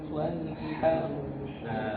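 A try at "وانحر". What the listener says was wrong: Rohnya tabkhim. Ya, rohnya tabkhim. Jadi huruf ro itu dia punya sifat kadang dibaca tabkhim, kadang dibaca tarqiq. Kasus seperti ini dia dibaca tabkhim.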